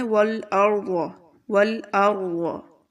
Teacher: والارض، ٹھیک ہے، رو بہت موٹا پڑھیں گے، وود، وود، اس کی آواز آپ نے بہت اچھے سے نکالنی ہے۔